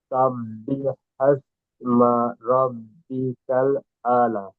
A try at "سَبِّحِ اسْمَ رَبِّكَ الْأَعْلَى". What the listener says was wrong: জি, এই লাটা একালিপ টান হবে, বলেছিলাম মধ্যে তাবির।